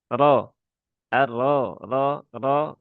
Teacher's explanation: huruf ro ini dia dibaca dengan ee tafhim ya atau tebal Ro arro ro ro ro ro r r ru ro r r ru ya bukan monyong.